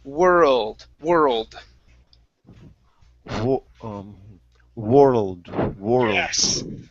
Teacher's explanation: this sound in between the r and the l creating an extra uh sound not very strong you don't want it to last very long but it's a